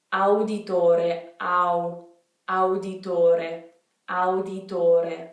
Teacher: Even when we have two vowels beside each other, each one is pronounced individually.